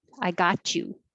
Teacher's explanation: the t and the y make a cha